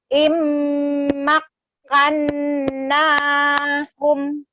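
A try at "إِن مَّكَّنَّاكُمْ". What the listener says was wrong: Kum ya. Huruf yang di belakang itu adalah kaf ya, kum. Kalau yang di depan itu baru hum gitu ya Teh ya. Beda di situ. Immakkannakum.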